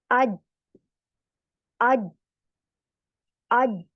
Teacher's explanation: तो जुबान का वस्तल लिसान, यानी कि जबान का बीच वाला हिस्सा, दरमियानी हिस्सा ऊपर हार्ड पैलेट से चिपक जाता है। हार्ड पैलेट यानी सख्त तालू से चिपकता है, जरा भी गैप नहीं रहता। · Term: जीम